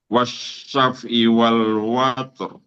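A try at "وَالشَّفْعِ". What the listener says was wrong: Fa matinya, suaranya mengalir dulu. Syaf'i, syaf'i wal. Wasyaf'i. Nah, fa-nya buru-buru. Jalan dulu seperti itu. Wasyaf'i.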